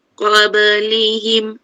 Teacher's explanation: Qablihim jangan qab tak payah tekan. Qablihim lantunannya sederhana.